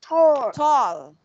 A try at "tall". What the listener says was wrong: Okay, you have to practice letter L, okay? Ending with L. Tall.